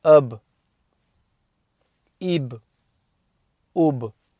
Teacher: the sound starts on the Fatha and ends on the B, on the makhraj of whatever letter has got the Sukun.